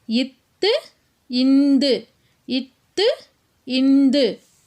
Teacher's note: இந்த ரெண்டு மெய்களும் மேல்வாய் பல்லின் அடியை நாக்கினுடைய நுனி பொருந்துவதால் பிறக்குது